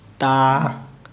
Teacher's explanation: ता ज़बान को ऊपर के दांतों के किनारे में लगाना है, ठीक है। ज़बान की नोक, अब जाहिर सी बात है ज़बान के भी तीन हिस्से हो जाते हैं।